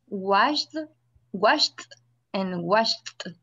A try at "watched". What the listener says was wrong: Ajá, lo que pasa es que usted se está confundiendo con la D en el pasado. Entonces, los dos sonidos de la CH y la SH no tienen vibración, entonces significa que los dos verbos se van a pronunciar igual al final.